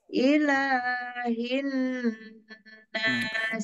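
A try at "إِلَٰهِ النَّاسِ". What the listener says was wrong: Ilahnya masih kepanjangan, Bu, sedikit. Ilahin Itu mad aridnya, Bu, masih sepertinya masih kurang, Bu. Ilahin nas.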